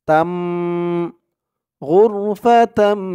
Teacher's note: তা মিম দুই জবর তাম গুন্নাহ করতে হবে ইকলাব গুন্না